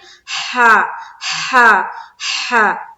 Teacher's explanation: जब भी हम अदा करते हैं तो गौर करें कि हलक से एक हवा की सी निकलती है ना